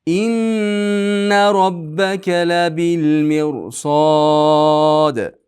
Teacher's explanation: Mirod bu yerda rog'on bo'ladi. Sababi rodan keyin sod kelyapti. Sot esa yug'on harflaridan.